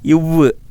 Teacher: மேல்வாய் பல்லை கீழ் உதடு பொருந்துவதால் உருவாகிறது